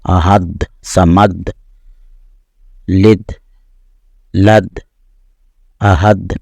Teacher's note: جیسے شروع میں احد، تو اس میں یہ میں تھوڑا زیادہ وضاحت کے ساتھ احد، یہ تھوڑا زیادہ لینتھ میں کر رہا ہوں۔ تو اس طرح دال جو ہے نا، جب اس پہ سکون آئے گا تو اس میں آواز پلٹ کر آئے گی، یعنی قلقلہ ہوگا